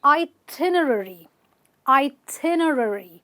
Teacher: a list of what you have to do when you are on vacation is an itinerary with the stress on the tin